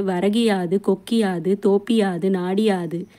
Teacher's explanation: குற்றியலுகர சொற்களை தொடர்ந்து யகரத்தை முதல் எழுத்தாக கொண்ட சொற்கள் வரும்பொழுது குற்றியலுகரத்தில் வரும் உகரம் இகரமாக மாறும். தனக்குரிய ஒரு மாத்திரை அளவில் இருந்து அரை மாத்திரை அளவாக குறைந்து ஒலிக்கும் இகரம் குற்றியலிகரம்.